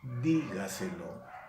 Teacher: lleva el acento en la sílaba que está antes de la antepenúltima sílaba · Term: sobreesdrújula